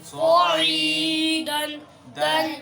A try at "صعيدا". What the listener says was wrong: آپ نے اخفاء نہیں یا پورا بولنا صعیدا پورا زلا پورا لفظ پڑھ دیں